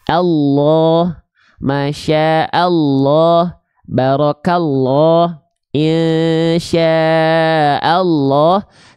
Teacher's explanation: Bukankah kalau kita membaca lafaz Allah itu bunyi lamnya seperti vokal O? · Lalu teman-teman dapati lafaz Allahnya diikuti oleh bunyi vokal A ataupun bunyi vokal U, maka dia dibaca lafaz Allahnya dengan keadaan yang tebal. Keadaan yang tebal itu menjadikan bunyi lam itu seperti vokal O. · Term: lam jalalah